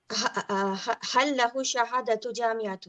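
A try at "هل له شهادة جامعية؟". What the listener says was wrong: Jami'iyya. Not jami'ah. Jami'iyya. Now, you said shahada too, which means you made it light. So our rule in Arabic is you don't make something light until jami'iyyatun.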